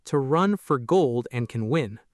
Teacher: Stress content words, run, gold, win. Unstressed valleys, to, for, and, can.